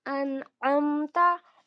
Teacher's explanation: हमजा को नून से मिलाएंगे, यहाँ पर जज़म है, सुकून के साथ पढ़ा जाएगा